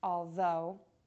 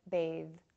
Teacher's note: The voiced TH is the same as the voiceless TH, but your voice is now engaged. To make this consonant sound, the tongue is placed between the teeth. · Be sure that there is no hard contact with the teeth and the tongue. The airflow is going to continue loudly, and the voice is on. You can actually feel the tension from the voice box moving up through the tongue. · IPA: /ð/